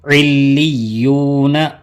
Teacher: دیکھیے لام کو بھی 2 مرتبہ پڑھیں، یا کو بھی 2 مرتبہ پڑھنا